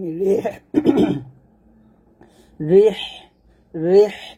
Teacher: রিহ চিকন করে বাতাস বের করবেন